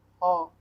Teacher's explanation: ह वर्ड कंठ महाप्राण घोष वर्ड का उदाहरण है